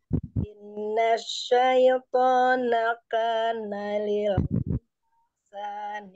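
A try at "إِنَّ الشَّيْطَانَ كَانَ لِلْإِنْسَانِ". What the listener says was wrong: Inna ditambah gunanya, Om. Inna syaitana.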